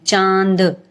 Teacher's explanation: इसके लिए हम चंद्र बिंदु का प्रयोग करते हैं जैसे हम जब चांद शब्द बोलते हैं तो हमारे नाक और मुंह दोनों से हवा निकलती है इसलिए हम इस पर चंद्र बिंदु का प्र प्रयोग करते हैं · अनुनासिक यानी इसके उच्चारण में हवा मुंह और नाक दोनों से निकलती है।